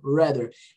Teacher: Esse R do inglês, guys, é o que a gente chama de R retroflexo.